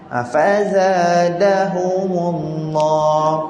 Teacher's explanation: fa dengan zai kat sini kita nak bunyi nipis